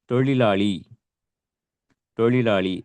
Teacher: ழ சொல்றோம் இல்லையா இந்த நாக்கு மடங்கி போயி உள்நாக்க போய் தொடணும். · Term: சிறப்புழகரத்தை